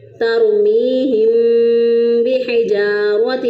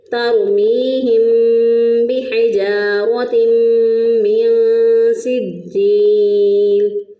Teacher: جب ہم منہ کو بند کریں گے، دونوں ہونٹوں کو آپس میں بند کر لیں گے تو آواز ناک میں چلی جائے گی، جب آواز ناک میں چلی جائے گی تو ناک میں آواز جانے کو کہتے ہیں گنہ کرنا، تو ہم اس کو پڑھیں گے تَرْمِيهِمْ بِحِجَارَةٍ مِّن سِجِّيلٍ۔